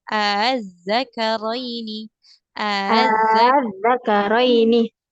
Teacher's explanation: Yang tashil itu dia tidak panjang.